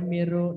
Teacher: Nun sukun bertemu ro. Melebur huruf nun kepada ro. Ingat tanpa dengung.